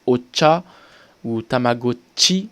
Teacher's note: il va se prononcer ch, comme s'il y avait un T devant